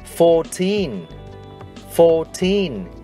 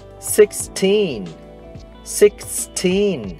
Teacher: tất cả các số từ 14 cho đến 19 đều có đuôi giống nhau, teen, và trọng âm trong các từ này đều rơi vào teen. Vì thế, chúng ta sẽ phát âm âm teen to hơn âm đầu tiên.